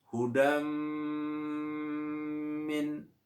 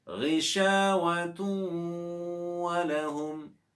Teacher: wajib dibaca mendengung dan dinamakan idgham bi gunnah